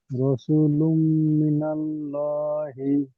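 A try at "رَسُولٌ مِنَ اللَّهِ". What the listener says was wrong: জি, ঠিক আছে,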